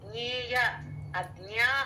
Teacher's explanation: అజ్ఞ అన్నది కొంచెం ముక్కుతో రావాలి